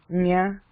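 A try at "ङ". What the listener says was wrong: But the last one is more like nga, nga, not so nga. So again, at the back of the throat, expand it while expand it at the back. Because if you don't expand that, then what happens is the air seems to constrict at number 2, which should not happen.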